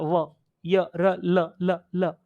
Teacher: ईशत स्पृष्ट, स्पर्श तो होगा पर थोड़ा सा होगा, व पूरा पूरे दांत नहीं टच होंगे, केवल हल्का सा, यहां आगे का दांत का हल्का सा आगे का वाला व, य र ल ल ल।